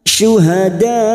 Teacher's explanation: Hamzahnya yang bentuknya seperti ini, hamzah kecil, ini disebut dengan mad wajib mutasil. Panjangnya 5 harokat sambil kita wakafkan.